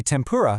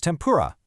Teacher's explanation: It's why tempura so naturally becomes tempura. That N sound turns into an M to get ready for the P. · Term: assimilation